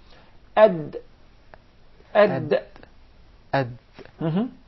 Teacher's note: So the Dal is pronounced from the top side of the tip of the tongue.